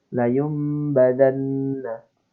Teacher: Nah, antara nun sukun bertemu dengan ba menjadi mim yang sukun gitu. Dan perlu didengungkan. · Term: iklab